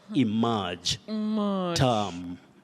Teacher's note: ER combining to form the mid-central sound, the long one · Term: long mid-central sound